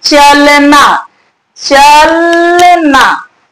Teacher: अ का उच्चारण पूर्ण नहीं हो रहा, पूरी तरीके से अ का उच्चारण नहीं हो रहा है